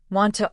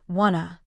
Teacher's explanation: In fast speech, want to often sounds like wanna.